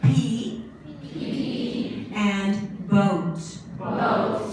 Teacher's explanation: They're called bilabial consonants. The two lips come together.